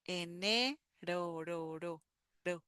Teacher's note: we begin the tip of the tongue on the upper part of our mouth behind our teeth in the upper palate